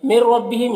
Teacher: تو نون کو را سے ملا کر بغیر غنہ کے پڑھیں گے، اس کو ادغام تام کہتے ہیں۔